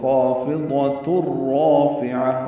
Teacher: تنوین کے بعد را آنے کی وجہ سے ادغام ہوا ہے، تا کو را سے ملا دیں گے